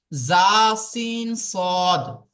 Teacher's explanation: জীবের আগা সামনের উপরের দুই দাঁত এবং সামনের নিচের দুই দাঁতের আগার সাথে লাগিয়ে উচ্চারিত হবে